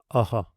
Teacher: Aha is pronounced like an aspirated sound with the small repetition of the previous vowel. We could represent it in writing as the same letter followed by the aspiration and accompanied by the same vowel written in uh smaller superscripted script. · pronounced like an aspirated sound with a small repetition of a previous vowel